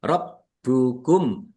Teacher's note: bnya dibaca dobel ada tasdidnya ditekan dan ditahan